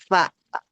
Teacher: ujung gigi seri atas bertemu dengan perut bibir bawah bagian dalam, ya kan? Ujung gigi seri atas, ujung gigi nempel ke perut apa bibir bawah bagian dalam. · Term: huruf fa